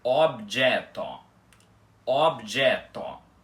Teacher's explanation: a pronúncia correta da palavra é objeto, com os 2 Os da palavra abertos